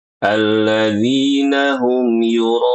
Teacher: pada kata yuroun Ro ini wajib empat harakat ya. Sayang sekali banyak kaum muslimin bacanya jadi dua harakat.